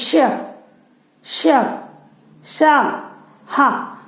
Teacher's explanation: गर्म, गर्म वायु बाहर निकलती है। ऐसे व्यंजनों को ऊष्म व्यंजन कहते हैं।